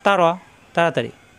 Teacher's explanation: র যাবর র, রা হবে না। র যাবর আসলে আকার প্রকাশ পায় না, রই থাকে।